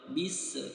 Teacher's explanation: huruf Sin dalam keadaan sukun tidak dibaca mantul